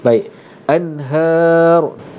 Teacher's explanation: Jadi di sini nun, maka dibunyikan dengan nun betul-betul an. Tidak ada dengung. Kenapa? Kerana di sini hukumnya izhar halqi.